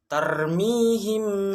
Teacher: ikhfa syafawi Ikhfa Syafawi adalah apabila mim sukun bertemu huruf ba cara membacanya Ghunnah artinya dengung atau suara dari hidung